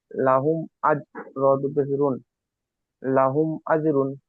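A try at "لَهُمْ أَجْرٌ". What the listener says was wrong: মাশাআল্লাহ, খুব সুন্দর পড়েছেন।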